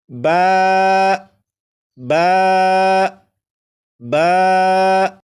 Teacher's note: با کو 1 الف کے برابر کھینچ کر پڑھیں گے